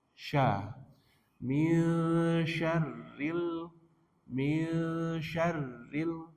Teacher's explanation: antara lidah dengan langit itu ada udara yang menyebar · Ikhfa hakiki. Nunnya dibaca samar-samar. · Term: sifat tafasyi